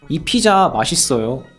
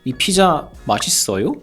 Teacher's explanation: you can ask a question in Korean just by raising your tone. That's true, especially for closed questions, which are also called yes/no questions. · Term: rising tone